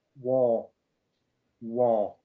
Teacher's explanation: in british english they don't pronounce the r because it's non-rhotic